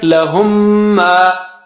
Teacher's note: because meme has shadda, that means you have to do ghunna here too